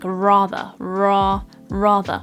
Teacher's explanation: and we create the r sound like rather ra rather but at the very end of the word we don't actually pronounce the r sound · The R at the start we pronounce and we create the R sound like a rather, ra, rather. But at the very end of the word, we don't actually pronounce the R sound. And this is one of the key features of an RP accent, where the R at the end, if it's not followed by a vowel, is actually dropped off and not pronounced. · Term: non-rhotic R